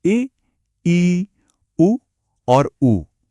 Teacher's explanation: संवृत जिसका मतलब है बंद। यह वह स्वर हैं जिन्हें हम मुंह को लगभग पूरी तरह बंद करके पैदा करते हैं।